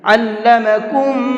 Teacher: 2 میم ایک ساتھ آتے ہیں تو دونوں میم کو مکس کر دیتے ہیں اور پھر غنہ کر کے پڑھتے ہیں۔ تو اب یہاں پر مکس کر دیا تو ایک ہی میم بن جائے گا اور غنہ بھی کریں گے۔